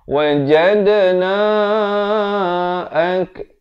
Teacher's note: Wajadna, lantunan qalqalah sughra di sini.